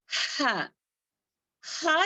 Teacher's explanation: हा जो है वस्तल हलक से अदा होने वाला है